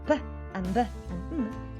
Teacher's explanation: p and b and m are produced with both of your lips. So you use the movement of both lips. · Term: bilabial consonant